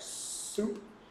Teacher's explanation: Right? You'll notice the S I make for soup looks more like a pucker, right? Soup.